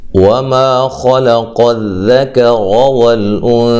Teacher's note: خا اور قاف کو موٹا، لام کو باریک